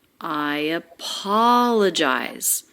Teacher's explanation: i apologize i apologize a five-syllable thought group i apoll and the middle syllable the third syllable is the most stressed i apologize but the intonation is smooth we don't have skips